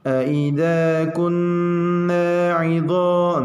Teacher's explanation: mad tabi'i ini cara membacanya dipanjangkan 2 harokat, ya 2 ketukan. Jangan sampai dikosor atau dipendekkan.